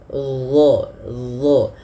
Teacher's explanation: Kemudian pada lafal dha, huruf dha ini dia makhrajnya sama dengan huruf dzal, akan tetapi yang membedakan adalah huruf dha ini harus ditebalkan. Dha, pangkal lidah kita naik karena ada salah satu sifatnya huruf isti'la